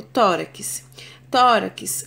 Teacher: a minha sílaba tônica é tor